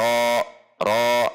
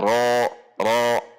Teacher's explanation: Tun, dhammah tanwin bertemu ro, sehingga hukumnya adalah idgham bila gunnah masuk dengan sifat ro, yaitu yang bainiyah. Ro mad tabi'i dengan tebal.